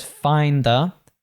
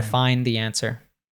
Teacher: D and a T following each other, you might drop one of them